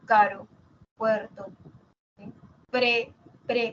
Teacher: Cuando digo pre ahí está la vibrante simple no decimos pre no no decimos pre decimos la simple e